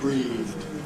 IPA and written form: briːðd (breathed)